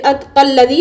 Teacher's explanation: قاف کو لام کے ساتھ ملا کر پڑھیں گے، پھر اس وقت اس الف کو نہیں پڑھیں گے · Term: حمزۃ الوصل